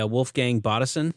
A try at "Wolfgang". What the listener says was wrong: Wolfgang. You gotta say it with a V, like you're German.